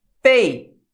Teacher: O E é mais forte que o I. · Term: ditongos decrescentes